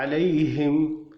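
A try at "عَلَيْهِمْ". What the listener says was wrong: बस यहाँ पर आपने वो ठहराया है, गुन्ना किया है। हिम कहे, गैरिल मग़दूबि अलैहिम वलद्दोल्लीन, हिम न कहे, लम्बा न करे। हिम पर तब करें जब शद हो। शद यहाँ तो नहीं है ना।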